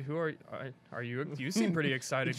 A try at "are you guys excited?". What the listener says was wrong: I think he's saying like, are you guys excited? You're reading it wrong emphasis there. You guys excited?